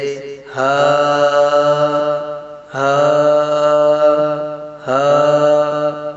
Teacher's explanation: اقصی حلق سے یعنی سینے کی طرف والا حصہ سے ہا ادا ہوتا ہے